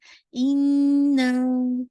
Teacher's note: नून मुशद्दद है, तो आपको इसमें आपकी साउंड वाइब्रेशन की होगी